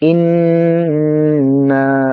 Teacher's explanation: ইন বলে গুন্না করব